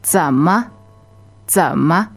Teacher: So the one that means how is 怎么? Okay, third tone, which goes low, and then ma is neutral, right? That's right.